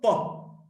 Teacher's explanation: Pa is voiceless because there is no vibration.